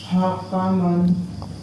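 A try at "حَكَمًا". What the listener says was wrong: tipis lagi ha, nggak boleh ha. Ha, nggak boleh.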